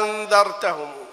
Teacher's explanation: هي الهمزة الثانية تحولت إلى الألف هذه. فهي همزة واحدة بعدها نون مخفاة. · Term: الإبدال